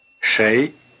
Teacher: Try repeating the word for who with this R-flavored sh. 谁 Have you been paying attention to the tone? It's the rising tone.